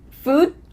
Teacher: What happens to that final D? We just cut it off.